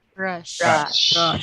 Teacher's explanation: voiceless, oral, alveolar, palatal, fricative